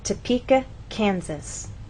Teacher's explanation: we stress the middle part of the word, Topeka, and here the first part, Kansas